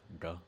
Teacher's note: the DH actually represents like a retroflex D, like duh kind of sound.